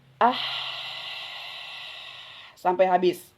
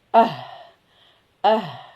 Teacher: Kalau hak yang di tengah tenggorokan nafasnya lebih panjang.